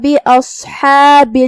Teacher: صاد حروف التفخیم میں سے ہے، ہم اسے بھاری آواز میں منہ پھلا کے پڑھیں گے · ہا کی ادائیگی حلق کے درمیان والے حصے سے ہے